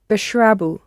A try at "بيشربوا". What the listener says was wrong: Pronounce the ye. Bishrabu. Bishrabu.